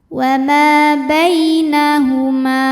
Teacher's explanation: sebab ada ya sukun didahului baris fathah maka dibacanya lembut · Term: harfulin